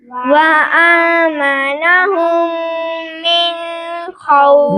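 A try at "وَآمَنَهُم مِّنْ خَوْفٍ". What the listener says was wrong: من پر غنہ نہیں کریں گے، آگے حروف ہلکی ہے تو اس لیے نون ساکن پر غنہ نہیں ہوگا۔ وآمنہم من خوف۔ من پر غنہ نہیں کریں گے بیٹا، من خوف۔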